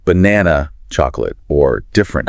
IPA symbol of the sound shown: ə